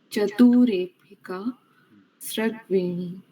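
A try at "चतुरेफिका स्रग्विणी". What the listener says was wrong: अच्छा, मैंने इसमें कहीं लिखा है कि बीच में यति है, पादांत यति है ना, तो पॉज क्यों दे रही हैं? एक साथ पढ़िए। और प्रवाह में पढ़िए, फ्लो में।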